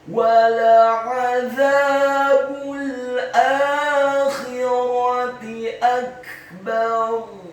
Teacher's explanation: huruf ra-nya dibaca sukun, isti'la wa tafkhim, bergetar dan tebal.